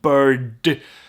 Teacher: our tongue bends back so the r is dropped and here the d would be a retroflex d